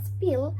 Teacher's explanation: In the word spill, the p sound is not accompanied by aspiration, so it is an unaspirated p sound without any diacritics.